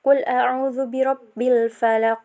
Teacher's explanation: cara membacanya yaitu dengan memantulkan suara dari makhraj huruf qaf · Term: Qalqalah Kubro